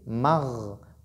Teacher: Ghayn a un attribut qu'on appelle ar-rakhawa. Donc, je dois laisser le son continuer.